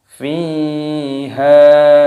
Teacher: Fiha, ya sukun, ini dipanjangkan huruf fi-nya, ada tanda alifnya, haknya dipanjangkan. Sama-sama keduanya mad tabi'i, dipanjangkan dua ketukan.